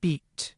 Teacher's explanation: At the high-front part of the vowel space, we have two vowels. The first is [i], as in beat.